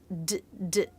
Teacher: D is a stop consonant, so I let air build up a little bit in my throat, d, d, and then release it.